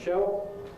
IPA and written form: ʃeo (Shell)